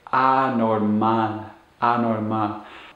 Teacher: Make sure you put the stress on the last syllable.